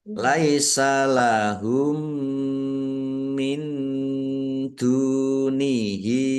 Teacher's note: Mim sukun bertemu dengan huruf mim, bacaan idgham mutamasilain atau idgham mimi. Mendengung mim. Ditandai mimnya ada tasdidnya.